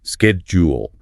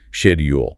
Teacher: BRE often uses a softer sh sound.